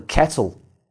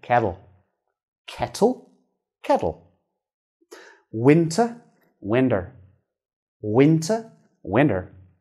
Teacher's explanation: between two vowels or diphthongs it's identical to a d sound